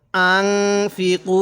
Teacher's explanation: এখানে এক আলিফ টান দিব, কারণ পেশের বামে ওয়াও সাকিন, এজন্য আমরা এক আলিফ টান দিব।